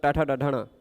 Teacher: मूर्धा उच्चारण स्थान है